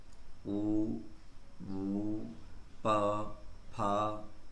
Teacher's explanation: ओष्ठ, होंठ के स्पर्श से जो उच्चारण होता है उन्हें ओष्ठ। जैसे ऊ, ऊ, प, फ, देखिएगा ओष्ठ से इसका उच्चारण निकल रहा है।